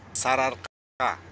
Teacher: В эксплицитных словах и словосочетаниях влияет следующие гласные. Под влиянием последующей гласной предыдущая гласная падает при произношении.